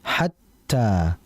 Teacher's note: Ta di sini dia bersifat syiddah. Artinya syiddah itu langsung dihentak atau langsung to the point, langsung dimasukkan.